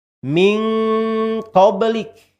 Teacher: kita dekatkan dengungnya atau besarkan dengungnya dibandingkan samarnya ya.